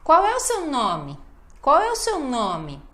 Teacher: Olha a ênfase sempre na última palavra